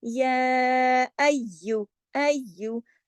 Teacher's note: और ये सारे हुरूफ जो हैं बारीक हुरूफ हैं। इसको पढ़ने के लिए मुंह को बड़ा सा ऊपर नीचे नहीं खोलना, आपके होंठ साइड वाइज स्ट्रेच होने चाहिए। और इसमें तशदीद है, सख्ती से जुड़ेगा, लेकिन या जो है वो नरम लेटर है।